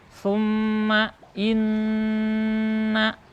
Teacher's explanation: Suma Inna harus masuk ke rongga hidung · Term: ghunnah